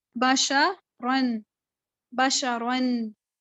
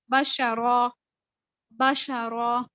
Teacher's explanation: جب میں نے رکنا ہے نا تو میں نے اس کو بشرا پڑھنا ہے، اس کو میں نے بشرن نہیں پڑھنا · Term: وقف